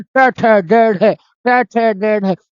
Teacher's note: तो पूरे मुंह से बोलना पड़ेगा, इसको मूर्धन्य या मूर्धा उच्चारण कहते हैं